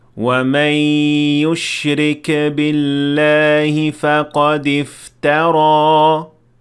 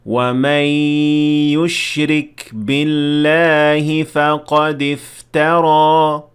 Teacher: kaf should not have qalqalah under no circumstances.